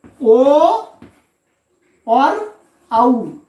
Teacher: ये ओ और औ, ये दो वर्ण हैं, इनका स्थान क्या है? कहते हैं कंठ और ओष्ठ।